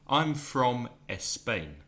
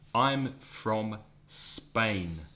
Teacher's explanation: even when Spanish speakers say Spain in English they put an e at the beginning